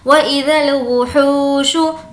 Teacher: हू को खींचेंगे क्योंकि वाव मद्दा। वाव मद्दा का मतलब होता है वाव जिस पर जज़म हो और उससे पहले पेश हो, तो उसको खींच कर पढ़ेंगे।